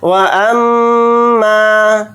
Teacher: واو کو جلدی پڑھیں گے، حمزہ کو میم کے ساتھ ملا کر پڑھیں گے، میم کے ساتھ الف مدہ ہے، میم الف زبر ما کو تھوڑا کھینچ کر پڑھیں گے، میم کے اوپر تشدید ہے تو میم کے اندر غنہ بھی کریں گے · ناک میں تھوڑی دیر آواز کو روک کر چلیں گے